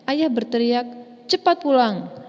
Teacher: cepat pulang dibaca dengan nada yang lebih tinggi dibanding kata ayah berteriak · pada kata cepat pulang itu harus lebih ditekankan dibanding kalimat pengiringnya